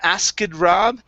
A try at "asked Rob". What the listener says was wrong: go straight to a T, forget about the K sound. It's asked Rob.